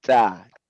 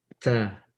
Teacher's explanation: Nggak ada anginnya. Tapi ta orang Arab harus ada anginnya.